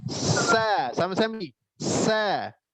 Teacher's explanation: Ujung lidah di belakang gigi seri bawah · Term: sin